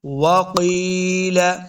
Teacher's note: قاف کو موٹا پڑھنا ہے، قاف حروف مستعلیہ سے ہے